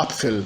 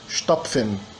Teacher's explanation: não vira uma fricativa total, vira uma africada, uma intermediária